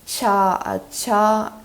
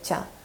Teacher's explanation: So, it's cha, which is the aspirated version and the unaspirated version